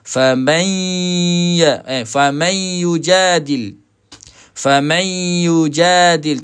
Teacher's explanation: walaupun makhraj dia dah pergi kepada ya tapi dengung dia masih ada lagi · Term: idgham naqis